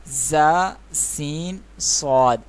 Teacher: 3 حروف ایسے ہیں کہ جو سختی اور سیٹی کے ساتھ ادا کیے جاتے ہیں، وہ ہیں زا، سین اور صاد. صاد کو موٹا بھی پڑھیں گے اور پڑھتے ہوئے اس کے شروع میں سیٹی کا ساؤنڈ بھی آئے گا، سیٹی کی آواز بھی آئے گی.